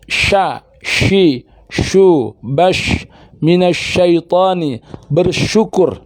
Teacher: Makhrajnya sama di tengah lisan, angkat ke langit-langit. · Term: shin